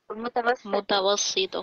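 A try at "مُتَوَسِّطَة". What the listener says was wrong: हाँ, मुतवस्सिता मुतवस्सिता, सीन के ऊपर ये कसरा है मुतवस्सिता।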